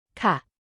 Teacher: Note that women can use two standard polite particles in Thai, which differ in tone. The affirmative particle has a short falling tone,